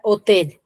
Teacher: tiene la mayor fuerza de voz en la última sílaba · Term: aguda